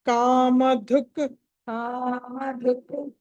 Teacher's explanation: ధ అన్నది మహాప్రాణం ఒత్తి పలకాలి